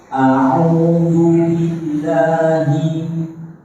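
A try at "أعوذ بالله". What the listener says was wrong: Jangan ada penekanan la biasa. La.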